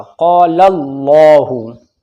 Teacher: اس سے پہلے لام کے اوپر زبر ہے تو یہاں پر یہ اللہ کا لام موٹا پڑھا جائے گا